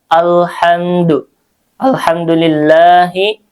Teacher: Ah kalau di sini al-nya alif lamnya qamariah makanya dibaca izhar ya. Jelas lamnya terdengar jelas.